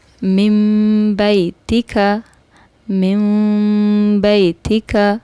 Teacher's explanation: یہاں پر غنہ کرنا ہے، اور یہ یاد رکھیں ساتھ میم بھی پڑھنا ہے، کیونکہ یہاں نون ساکن کے بعد با آیا ہے۔